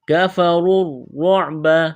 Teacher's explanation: کاف کو باریک کرنا ہے، را کو موٹا کرنا ہے